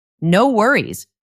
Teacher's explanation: For pronunciation, we say it very quickly. It almost sounds like one word